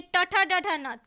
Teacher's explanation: मूर्धन्य व्यंजन ऐसे व्यंजन होते हैं जो जीवा द्वारा वत्सर्य, कटक और कठोर तालु के बीच उच्चारित होते हैं